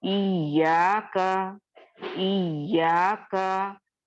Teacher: या पे हम क्या कर रहे हैं, थोड़ा स्ट्रेस करके पढ़ रहे हैं। ठीक है, इसी को नब्र कहा जाता है।